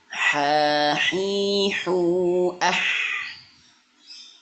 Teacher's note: Huruf H makhrajnya adalah berada di tengah tenggorokan. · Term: H kecil